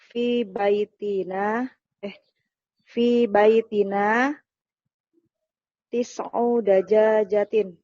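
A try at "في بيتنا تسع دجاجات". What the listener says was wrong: Jangan panjangin, dajajatin. Ulang lagi.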